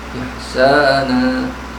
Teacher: Tanwin ganti fathah, ya, ganti fathah panjang, dan nun dibaca panjang dua harakat. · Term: mad iwad